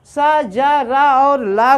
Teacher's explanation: वस यानी दांतों की जड़ से सा, जा, रा और ला का उच्चारण करेंगे।